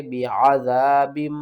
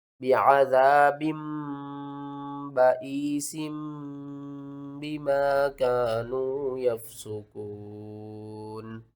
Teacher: تنوین کی آواز کو میم کی آواز میں بدل کر پڑھتے ہیں۔